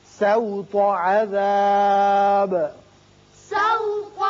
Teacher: سین باریک ہوگا، تو کو پر پڑھیں گے